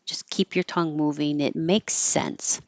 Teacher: You just make one S sound instead of stopping.